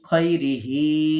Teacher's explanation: এই হির নিচে এখানে খাড়া জের আছে, যার কারণে আমরা এখানে খৈরিহি এই এক আলিফ পরিমাণ টেনে পড়ছি